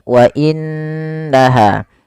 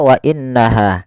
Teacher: suara nunnya kita tahan dengan sepanjang 2 harokat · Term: gunnah